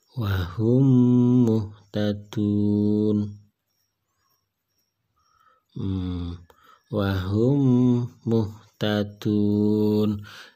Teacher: Jadi memnya jadi double, ya, karena sejenis, ya, sejenis dalam hal makhraj maupun sifatnya. Maka ini dinamakan idgham mutamatsilain.